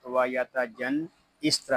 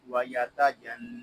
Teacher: یہاں نون مشدد ہے، اس کو غننے کے ساتھ ادا کریں گے